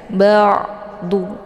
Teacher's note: Jadi tawassut itu antara ditahan dan ditekan. Jadi dialirkan setengah saja.